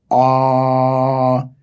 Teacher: double A is made with an open mouth can be held for a while